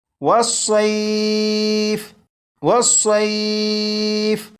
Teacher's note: اب اس لفظ کو پڑھیں گے، اور اس لفظ کے آخر میں فا کے نیچے زیر ہے، اس لفظ کو وقف میں پڑھیں گے تو فا کے نیچے جو زیر ہے اس زیر کو نہیں پڑھیں گے، بلکہ فا کو ساکن پڑھیں گے